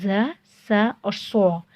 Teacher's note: ज़, स और सो ये सख्ती से पढ़े जाने वाले, सीटी की आवाज़ देकर पढ़े जाने वाले हुरूफ हैं, जिनमें ज़ और सा बारीक हर्फ है, जबकि सो मोटा है।